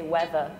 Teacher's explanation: We just don't pronounce the R, whereas you guys are like weather.